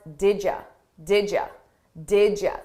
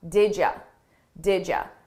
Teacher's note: I combine those sounds together and I take you and I change it to ya